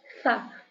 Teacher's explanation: pelafalannya itu sa dengan lidah digigit